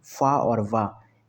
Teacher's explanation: तो option A में ही आया फा और वा, ये दंतोष्ठ हैं, दंत और ओठ, दांत और ओठों से बोले जाने वाले